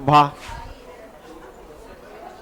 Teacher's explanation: हिंदी स्पर्श, घोष, महाप्राण और ओष्ठ